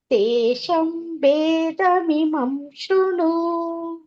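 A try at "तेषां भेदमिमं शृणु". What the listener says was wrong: ತೇಷಾಂ ಅದೊಂದು ದೀರ್ಘ ಮಾಡಿ ಅಷ್ಟೇ.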